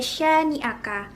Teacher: huruf Sin dengan fathah bertemu dengan alif ketemu dan Alif kemudian dibaca panjang dengan dua harokat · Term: Mad Thobi'i, mat tabi'i